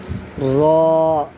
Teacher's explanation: زبان کی نوک اور مقابل کے تالوں سے ادا ہوتا ہے